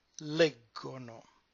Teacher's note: the stress moves one syllable up and it becomes leggono